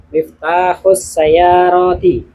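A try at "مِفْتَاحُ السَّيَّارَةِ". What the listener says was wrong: Kayaknya ada, kurang enak panjang pendeknya. Coba diulang. Sayyarati.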